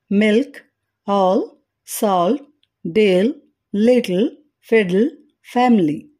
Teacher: L sound పదాల చివరిలో గాని వోవెల్ తర్వాత గాని ఉంటే అది డార్క్ ఎల్ అవుతుంది